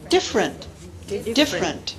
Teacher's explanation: in a process called Syncopy which is a medial vowel disappearing